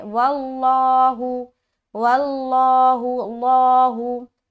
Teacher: जैसे कि यहाँ पर कसबू, आगे वल्लाहु, लफ्ज अल्लाह आ गया तो उससे पहले देखेंगे क्या है, हरकत, जबर की हरकत है। तो यहाँ पर लफ्ज अल्लाह को पुर पढ़ेंगे। तो लफ्ज अल्लाह का लाम को यहाँ पर क्या करना है, मोटा करके पढ़ना है।